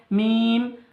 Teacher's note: দুই ঠোঁটের শুকনো অংশ মিলিত হয়ে উচ্চারিত হয়